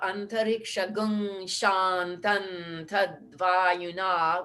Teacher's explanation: because we turned the M sound to the N sound multiple times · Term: anusvara